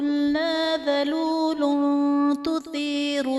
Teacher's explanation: ذلول تثیر میں لام پر دو پیش کی تنوین ہے، تنوین کے بعد حروف اخفا میں سے تا ہے تو یہاں پر اخفا کا قاعدہ ہوگا، یعنی تنوین میں ہم غنہ کر کے پڑھیں گے